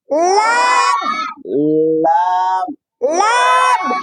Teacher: জিব্বার আগার কিনারা সামনের উপরের মাড়ির দাঁতের গোড়ার সঙ্গে লাগায়া উচ্চারণ হয়। তাহলে লামের মাখরাজ জিব্বার আগার কিনারা সামনের দাঁতের মাড়ির দাঁতের গোড়ার সাথে, সামনের যে দাঁত এই মাড়ির দাঁতের গোড়ার সঙ্গে জিব্বার আগাটা লাগাতে হয়।